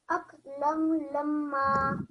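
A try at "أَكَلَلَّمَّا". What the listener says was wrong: So not lan, aklallamma.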